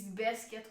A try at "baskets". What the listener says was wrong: There's an S. Basket. Baskets. You say the S in the middle. You say the S in the middle of it. I don't understand why you can't pronounce the S at the end of it.